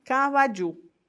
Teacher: no Guarani, o padrão acentual é oxítono. Então, se acentua a última.